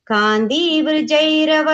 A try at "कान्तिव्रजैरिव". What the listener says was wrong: The third line, first word mattum brajai, I sound. Brajairiva. Yeah, Kanti, shorty, Kanti Vrajairiva.